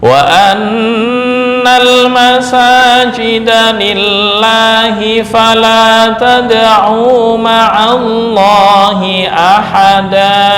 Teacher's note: untuk lillahi kenapa kok dibaca tipis? Karena sebelumnya berupa kasroh.